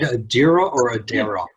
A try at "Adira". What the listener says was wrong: Edera. No, the I is pronounced like an E.